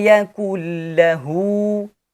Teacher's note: The letter lam has shadda, so it should be pronounced twice with a slight pause.